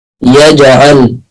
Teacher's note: الجيم مرققة وفيها قلقلة